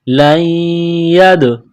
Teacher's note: یا کو دال کے ساتھ پلس کرنا ہے، دال ساکن ہے تو یہاں پر قلقلہ کریں گے